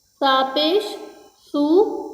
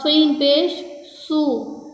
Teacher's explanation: اس سا میں سیٹی کی آواز نہیں نکلے گی، سین میں سیٹی کی آواز نکلے گی